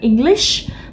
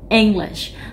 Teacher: Mình không đọc là EngLISH mà mình đọc cái ENG nó to hơn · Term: trọng âm